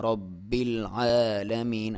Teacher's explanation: عین کے اوپر کھڑی زبر ہے اور کھڑی زبر کو ایک الف کے برابر یا 1 سیکنڈ تک آپ اسے لمبا کریں گے